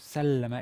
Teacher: So the first form, the first word, sallama, is looks as a regular perfect, except that there's a shadda over the middle root consonant. The lam is the middle root consonant. Sallama, it's long, and that lengthening is in fact the best marker of or the best way to see that a given verb, is in the second stem.